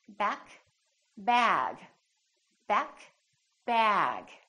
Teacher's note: to know whether a sound is voiced or voiceless is because the vowel that comes before the voice sound is longer